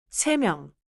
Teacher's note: 세 has no final consonant, so it flows right into the nasal beginning of 명. So, 세 명. I should not separate it like 세, pause, 명.